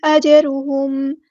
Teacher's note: جیم ساکن پر قلقلہ ہوگا، اس کو ہلانا ہے ، اور را ہمارا ہیوی لیٹر ہے، پورا ادا کریں گے،